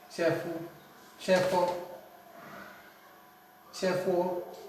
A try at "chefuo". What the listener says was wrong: Good. Chefuo. Chefuo. Very good.